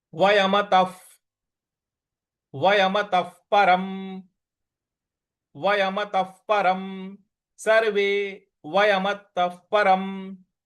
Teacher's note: त के बाद जो विसर्ग है उसका उच्चारण हमें फ ले आना है, क्योंकि उसके आगे प लिखा हुआ है।